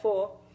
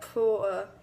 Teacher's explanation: The social elite among the plantation speakers did not lose the R sound. They replaced it with a vowel. Thus, the door sounds like door.